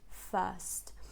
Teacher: the stressed syllable has the bird vowel, which is basically like the long schwa